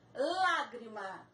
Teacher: Lágrima, também, lá é a sílaba mais forte, proparoxítona.